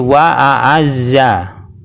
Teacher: Ada sebagian orang ketika mengucapkan lafadz wa a'azza itu dibolak-balik, kadang disamakan. Misalnya ketika mengucapkan lafadz wa a'azza, ainnya dirubah menjadi hamzah. Jadi wa a'azza itu adalah kesalahan yang fatal.